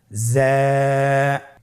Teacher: হরফটি বারিক হরফ, এই জন্যে পাতলা করে উচ্চারণ করতে হবে। জা হরফটির মাখরাজ আপনারা দেখতে পাচ্ছেন, জিহ্বার আগা সামনের নিচের 2 দাঁতের পেট ও আগার সঙ্গে লাগিয়ে উচ্চারিত হয়। · উচ্চারণ করার সময় অবশ্যই এক আলিফ টেনে পড়তে হবে, এক আলিফ টেনে পড়তে হবে। হরফটি বারিক হরফ, এই জন্যে পাতলা করে উচ্চারণ করতে হবে।